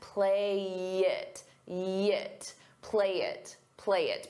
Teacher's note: We can combine play and it together. I'll take that y and I'll use it to connect.